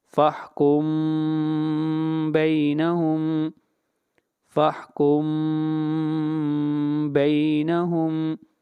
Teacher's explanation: یہ آپ کی مثال سامنے ہے، فَاحْكُم بَيْنَهُمْ کے اندر میم ساکن ہے اور میم ساکن کے بعد با آ رہا ہے، اس لیے ہم یہاں پر میم کو غنہ کے ذریعے اخفاء کے ساتھ پڑھیں گے